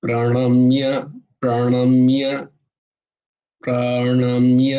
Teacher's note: মূর্ধন্যর উচ্চারণ করতে হবে, শুধু দন্তন্য বললে হবে না।